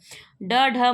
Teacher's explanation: ड, ढ, मूर्धन्य उक्षिप्त ध्वनियां है।